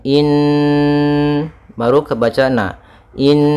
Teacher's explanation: yaitu bacaan gunah pada lafal Nun maka cara membacanya kita tahan